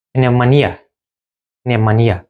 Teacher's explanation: Yəni üçüncü hecadır. E-yə düşüb vurğu.